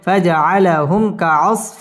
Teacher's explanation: মিম সাকিন ইজহারে খাস গুন্না ছাড়া পড়তে হবে